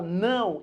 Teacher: embora apareça um O, na verdade isso daqui é um U. Você pronuncia como U. Portanto, é uma vogal e uma semivogal. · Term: ditongo